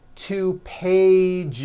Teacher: So let's look at the word page for example which ends in an in a voiced sound. One page becomes two pages with that voiced Z.